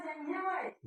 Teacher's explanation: वह का उच्चारण किससे होगा? दंत और ओष्ठ दोनों से होगा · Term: दंतोष्ठम